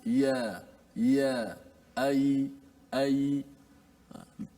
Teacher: Bila kita sebut ya, kita menggunakan apa? Menggunakan tengah lidah kita. Sama seperti kita sebut huruf shin. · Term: huruf ya